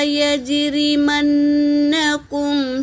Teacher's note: را اور میم پر حرکت ہے، جل پڑیں گے۔ نون پر تشدید ہے تو اس کا غنہ ہوگا۔ کاف حرکت ہے، میم پر سکون ہے، میم ساکن ہے۔